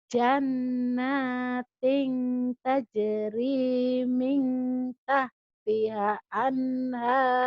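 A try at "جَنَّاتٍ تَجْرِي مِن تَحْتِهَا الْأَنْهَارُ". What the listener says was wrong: Mintah tihal nyamber bu. Mintah tihal. Kalau ketemu sukun ini nyamber. Kalau ketemu tasdid nyamber dan double. Ini nyamber. Mintah tihal anhar. Annya kenapa jelas? Karena nun mati ketemu haidhar.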